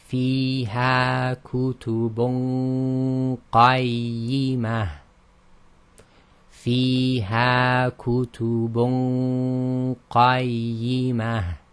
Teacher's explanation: And essentially when we do the ghunna, we're lifting the back of the tongue to make it heavy, but really, although we're lifting the back of the tongue, we're going to the articulation point of the qaf, and that's what's giving the heavy ghunna. And again, it's held in the nasal passage.